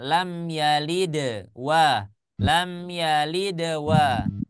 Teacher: Jadi kita melanjutkan bacaan sementara di sana huruf dalnya harus kita qalqalahkan